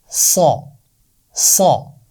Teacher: زبان کی نوک نیچے والے دانتوں کے سرے سے لگا کر موٹی آواز کے ساتھ ہم پڑھتے ہیں